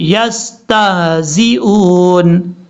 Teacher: تا کے بعد جو ہا ہے، اس ہا کو بھاری ساؤنڈ کے ساتھ پڑھا جائے گا، لیکن یہاں پر ہا کے اوپر زبر پڑھنے سے بچنا ہے.